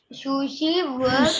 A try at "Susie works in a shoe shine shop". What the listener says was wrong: Not Sushi. Susie.